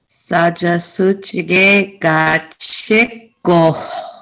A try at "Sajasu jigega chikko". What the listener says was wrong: Yeah, I like that. You really emphasize that. That's awesome.